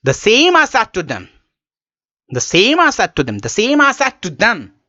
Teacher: Here I'm saying I said to them with a high tone, with a raised tone. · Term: rising tone